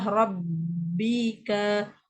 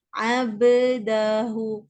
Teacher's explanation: Dia dah idghamkan huruf ba yang pertama ke dalam ba yang kedua.